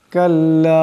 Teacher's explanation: এখানে লামের উপর মদ আছে, এই লামকে লম্বা করে পড়তে হবে